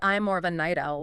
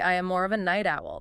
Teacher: The stress is on the type of person you are.